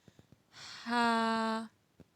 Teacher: حلق کے درمیانی حصے سے ادا ہوتا ہے